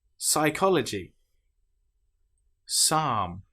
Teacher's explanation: Here we don't pronounce the P at all. We just pronounce the S sound. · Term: P is completely silent